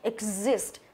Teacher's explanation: nhấn vào âm thứ hai